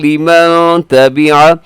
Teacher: لمن تبع نون ساکنی بعد تا ہے تو یہاں اخفا ہوگا